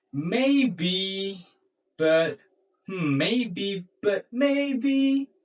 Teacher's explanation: See, there is an uncertainty put inside it because you mix a certain intonation that is down, and an uncertain intonation that is rising intonation